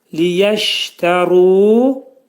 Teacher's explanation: Ru qalın oxunacaq. Ra hərfinin məxrəci dil yuxarı üst dişin altında olan damağa dəyir və qalın oxunur.